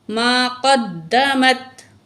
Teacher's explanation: قاف کو موٹا کر کے پڑھیں گے، دال کے ساتھ ملائیں گے